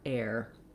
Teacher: do that tense A gliding into the R, air. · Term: air diphthong